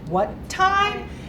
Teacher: we show surprise with a rising intonation